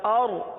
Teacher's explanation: را کے لیے زبان کو اٹھائیے، را کو پر پڑھیں گے، کیونکہ را ساکن سے پہلے زبر یا پیش آ جائے تو را کو پر پڑھا جاتا ہے، لہذا اس را کو پر پڑھیں گے.